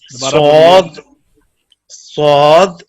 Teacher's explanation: tip of the tongue comes between the front top and bottom teeth